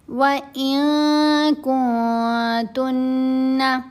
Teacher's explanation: دونوں جگہوں پر ہم نے اخفا کیا اور ساتھ غنہ بھی کیا جاتا ہے. جب اخفا کیا جائے گا ساتھ غنہ بھی کیا جائے گا.